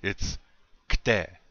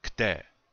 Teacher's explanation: you're just taking the click sound of the K and you're saying a hard T sound